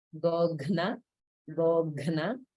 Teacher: we have a couple cases of the Mahaprana Gha combined with a na sound